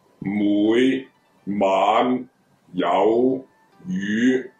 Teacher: 陽賞都係由低向高爬，但係個起步點係低咗嘅